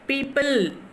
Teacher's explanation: Yeah, people, PIL, you are stressing PIL and you are louder.